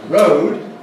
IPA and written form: rəʊd (road)